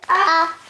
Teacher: زبر کی آواز آ ہے, چھوٹی آواز ہے. اس کو ہم کھینچ کے لمبی آواز نہیں کریں گے ورنہ یہ زبر جو ہے آپ سے ناراض ہو جائے گی, کیونکہ وہ چھوٹی آواز ہے.